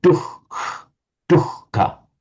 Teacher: the H will take on a bit of the color of the K